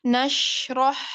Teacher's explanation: shin sukun dan ha sukun itu kedudukannya adalah rokhwah. Rokhwah itu adalah mengalir sempurna.